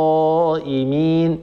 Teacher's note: لابد من تفخيمه الالف وتفخيم القاف التي قبلها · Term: تفخيم الألف